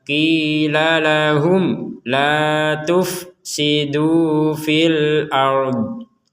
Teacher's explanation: Di sini mim mati bertemu lam, kita baca jelas.